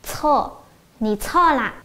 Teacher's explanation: Nǐ chuò là, nǐ chuò là. Lưu ý, chuò chúng ta sẽ bật hơi rất mạnh ha.